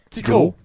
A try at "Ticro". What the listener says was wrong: Ticro. Pas tigro, mais ticro comme des petites dents.